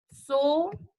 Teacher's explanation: a penúltima sílaba, ela é acentuada e ela é mais forte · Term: paroxítonas